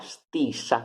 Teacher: la s sorda tra due vocali